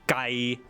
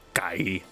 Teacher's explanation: If you say it flat like that, that means far away. You have to say gai, like low.